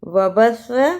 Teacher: وبث، اسے وبثا نہیں پڑھنا، سین کی آواز نہیں آنی چاہیے سا کی جگہ